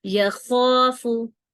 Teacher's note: یہ جو خوا ہے یہ تھوڑی موٹی پڑی جاتی ہے اور جیسے گلے میں خراش سی ہوتی ہے